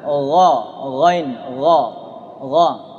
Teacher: Kalau ghain tidak ada riaknya, nggak ada dengkurnya.